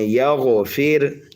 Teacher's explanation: را ساکن سے پہلے اگر زیر اصلی اسی کلمے میں آ جائے تو را کو باریک کر کے پڑھتے ہیں